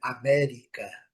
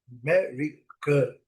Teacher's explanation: Os dois As têm o som do schwa.